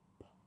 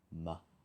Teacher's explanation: So P is like an unvoiced M, but there's no airflow through the nose.